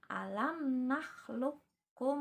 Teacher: jadi huruf qaf-nya itu dianggap tidak ada atau dileburkan, seolah-olah seperti ditasydidkan